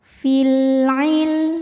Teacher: qamariah karena ada alif lam menghadapi huruf qamariah yaitu Ain maka lam sukun dibaca dengan jelas atau biasa disebut dengan izhar qamari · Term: idhar qamari